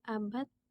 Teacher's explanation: Tapi kalau diucapkan bisa menjadi abad pakai T ujungnya.